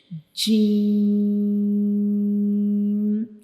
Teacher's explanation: जब हम जीम को रीड करते हैं तो हम इसको थ्री सेकंड्स के लिए लंबा करेंगे। जैसे कि जी और हम इसे थोड़ा सख्ती से पढ़ते हैं।